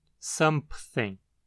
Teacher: a sequência de uma nasal, bilabial e uma fricativa dental pode acabar fazendo um P surgir entre elas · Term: epêntese consonantal